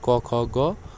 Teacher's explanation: जिन वर्णों के उच्चारण में जिह्वा के मूल का स्पर्श होता है उन्हें जिह्वा मूलीय कहते हैं